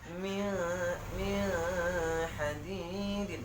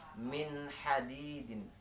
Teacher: Dan yang benar itu kita baca, jelaskan nunnya, jelaskan ha-nya